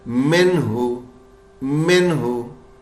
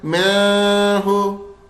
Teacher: نون کو بالکل صاف پڑھنا ہے اور غنہ نہیں ہوگا۔ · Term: نون کو ظاہر